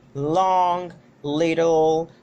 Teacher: It is produced when the tip of the tongue it touches the alveolar ridges of the back of the teeth, and we have that by its voicing it is voiced. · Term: L sound